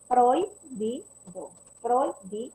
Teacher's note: decreciente. Es decreciente porque está primero la vocal abierta y luego la cerrada